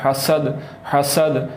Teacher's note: سین کو باریک پڑھنا ہے اور سیٹی کی آواز نکالنی ہے